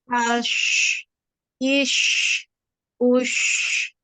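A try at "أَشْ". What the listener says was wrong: mulutnya ketika fathah itu dibuka. Ash, ya biar tidak tebal kedengarannya ya.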